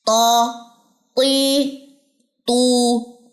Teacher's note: ऊपर वाले 2 दांतों की जड़ को जब जुबान की नोक लगती है तो ये हरूफ अदा होते हैं